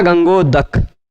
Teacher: क्योंकि अ का उच्चारण स्थान कंठ उ का ओष्ठ अ और उ दोनों को मिलाकर ओ जो बनेगा